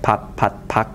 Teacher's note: load so there are many minimal triplets like pap pat that only contrast in the place of articulation of the final stop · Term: final stop place contrast